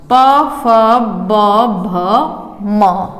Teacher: होठों के द्वारा जिन शब्दों का उच्चारण हो या जिनका उच्चारण स्थान हमारे होठ हैं वो आते हैं ओष्ठव में